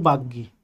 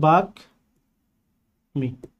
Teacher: এভাবে হওয়ার কথা ছিল, কিন্তু যেহেতু গয়ের সাথে যুক্ত হচ্ছে এ কারণে ব্যঞ্জনের দ্বিত্ব না হয়ে এখানে মটা উচ্চারিত হবে